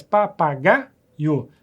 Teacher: Papagaio não, é paroxítona. A sílaba forte é a penúltima.